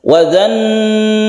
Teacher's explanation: ada al bertemu dengan nun, ini membentuk tasydid nun dari idgham syamsiyah. Ini idgham syamsiyah karena nun termasuk huruf-huruf syamsiyah atau huruf matahari yang harus diidghamkan, alnya tidak dibaca.